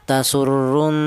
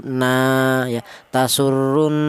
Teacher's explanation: Ghunah itu artinya ada suara berdengung. Adapun panjangnya dengung yaitu dua harakat.